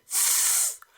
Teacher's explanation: I am putting my tongue between my teeth